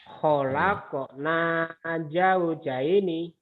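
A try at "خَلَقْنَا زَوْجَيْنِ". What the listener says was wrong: Tuh, itu udah bagus. Cuma nadanya nggak ada apa di situ, Bapak. Khalaqna khalaqna zaujaini zaujaini.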